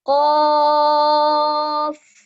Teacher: Kalau qaf, enggak boleh keluar nafas. Kalau dia dikebawahkan, dia nanti akan keluar nafasnya.